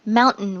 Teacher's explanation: this is one occasion in English where we do use the glottal stop before the N